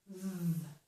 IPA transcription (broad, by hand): ð